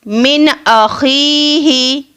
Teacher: نون ساکن کے بعد حمزہ ہے تو اس نون کو ہم ظاہر کر کے پڑھیں گے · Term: اظہار